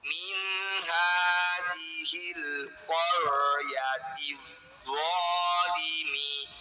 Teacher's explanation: Ro sukun didahului fathah disebut ro tafkhim. Tafkhim artinya tebal. Cara bunyikan ro dengan tebal, kita kurangi getaran huruf ro.